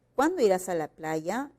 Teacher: cuando irás a la playa el tono es descendente · El tono es descendente, no podemos cambiar el sentido.